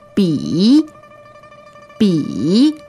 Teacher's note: Okay, B-I, third tone, that's the low tone.